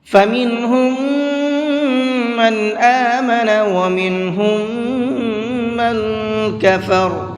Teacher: من کے اندر بھی تھوڑی دیر آواز کو ناک میں چھپا کر کے پڑھیں گے۔